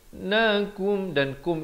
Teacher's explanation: Nakum dan kum itu izhar syafawi. Mim mati yang ada tanda mati asli itu jangan dipanjangkan, terus masuk.